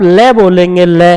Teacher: आप देखेंगे आपकी जीवा दांतों के मसूड़े में टच होती है जब ले बोला जाता है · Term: दंतमूल मसूड़ा